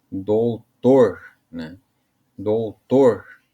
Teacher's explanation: Doutor, como se estivesse chamando, né? E aí você vai ver que a sílaba mais forte é o tor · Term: oxítona